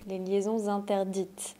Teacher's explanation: J'ai fait la liaison entre liaisons et interdites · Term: liaison facultative